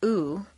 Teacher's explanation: a strong non-reducible sound ooh that is made far forward in the mouth with the lips fully rounded